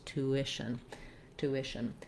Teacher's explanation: mouth when you glide between those two vowels tuition tuition then this tion ending has the sh sound as well as a syllabic n so there's really hardly any vowel here at all